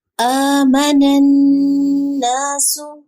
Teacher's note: نون شدید کی آواز ناک میں لے کے جائیں گے